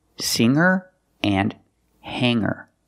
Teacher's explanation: the G is not pronounced with a hard G sound